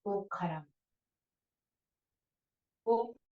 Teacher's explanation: इस शब्द में जिसमें संयोग हो, संयोग से पहले आदि का जो उ है वो ओ आदेश हो जाता है, ह्रस्व उ का दीर्घ ओ आदेश हो जाता है संयोग से पहले